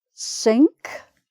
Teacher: So you still get the ng sound in it, but you can then put the K on.